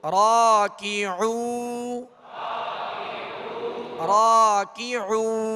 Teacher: را کے ساتھ الف ہے، ایک الف کی مقدار کھینچیں گے اور را کو پر پڑھیں گے